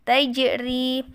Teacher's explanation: Jimnya adalah qalqalah, maka wajib dibaca memantul.